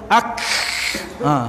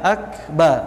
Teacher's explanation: Memang angin untuk kaf tu dia tidak banyak.